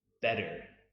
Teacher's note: You might notice that the T does not always make the same sound in the beginning, middle, and end of words. When the T is in between two vowels, it often makes the D sound as in better.